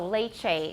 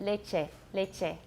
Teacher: we love to diphthongize vowels we bring that over from our native language